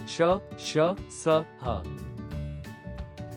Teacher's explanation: उष्म व्यंजन जिन्हें बोलते समय वायु घर्षण रगड़ के साथ बाहर आती है जिससे ऊष्मा महसूस होती है।